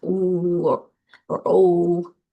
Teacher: certain sounds like our vowels, ooh or oh, our lips are rounded. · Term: rounding